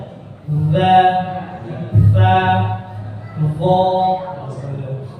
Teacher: huruf ujung lidah dengan ujung gigi atas, ujung gigi seri atas gigi yang depan. Ketika kita sebutkan ujung gigi atas, maksudnya adalah ujung gigi depan, gigi seri.